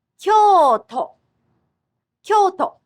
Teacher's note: Kyo has a double vowel while the part to has the short o.